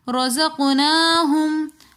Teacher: رَزَقْنَاهُمْ میں قاف ساکن ہے تو اس لیے ہم نے قاف کے اوپر قلقلہ کیا